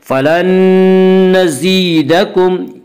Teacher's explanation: فلن نزیدکم یا مدہ وہ یا جو ساکن ہو اس سے پہلے زیر ہو، یا مدہ کو ایک الف کے برابر کھینچ کر پڑھیں گے